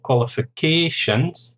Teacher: 5 syllables, stress on the 4th syllable